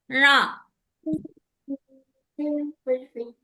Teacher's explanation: ణ నాలిక పైనే ఉంచాలి మూర్ధన్యానికి తగులుతూ